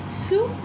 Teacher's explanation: Again, the S at the end is not pronounced. It is silent. It is sous.